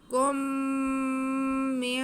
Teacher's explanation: کاف پہ پیش ہے، میم ساکن ہے تو کھینچنا تو نہیں ہے، لیکن میم ساکن کے بعد پھر میم آ رہا ہے تو یہ میم ساکن کے قواعد میں سے ادغام شفوی، اسے کہتے ہیں ادغام شفوی.